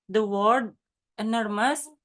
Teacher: The word enormous is stressed on the second syllable nor.